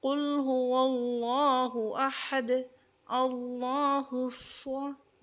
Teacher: صاد کو تھوڑا سختی کے ساتھ اور اس کو صاد کو پر کریں گے